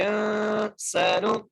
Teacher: حمزہ کو نون سے ملانا ہے نون پر غنہ کرنا ہے سین کو ایک مقدار کھینچ کے پڑھنا ہے سین پر سیٹی ادا کرنی ہے